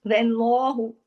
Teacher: वाव बारीक, लेकिन जब अल्लाह का नाम आएगा लाम जलाला होगा